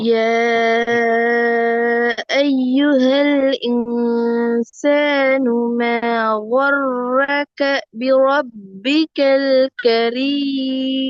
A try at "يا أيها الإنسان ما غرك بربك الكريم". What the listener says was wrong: கரீம் கேன்னு வரக்கூடாது. எப்படி வரணும் அது? கே கரீம். அந்த காஃப் எப்படி கேண்டு போச்சு இது? அப்படி கேண்டு உச்சரி பண்ணி நான் படிச்சேன் அப்படி உண்டு இல்லைனா கேக்கு போகக்கூடாது. கே கரீம்.